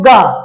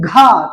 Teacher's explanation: और जब कहते घा तो लग रहा है कि अंदर से एक वायु ज्यादा ताकत लगा के निकाल रहे हैं और ज्यादा निकाल रहे हैं।